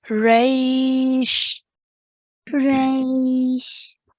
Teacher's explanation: at the end of the ray sound, we're going to make a sh sound for the sheen sakin